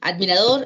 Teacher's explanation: admirador es una palabra que recibe el acento en la última sílaba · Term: aguda